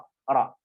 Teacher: Jadi ada getaran, cuman getarannya sedikit saja. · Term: sifat takrir